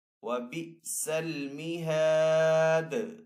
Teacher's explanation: دال حروف قلقلہ میں سے ہے، تو دال کے اوپر وقف کی صورت میں قلقلہ بھی کریں گے